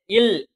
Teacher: இது மேல்வாய் பல்லோட அடிய நாக்கோட ஓரங்கள் தடித்து நெருங்குவதால் பிறக்கின்றன · இது மேல்வாய்ப்பல்லோட அடிய நாக்கோட ஓரங்கள் தடித்து நெருங்குவதால் பிறக்கின்றன. இந்த இல் அப்படிங்கிற எழுத்து மேல்வாய்ப்பல்லோட அடியினை நாக்கோட ஓரங்கள் தடித்து நெருங்குவதால் பிறக்கின்றன.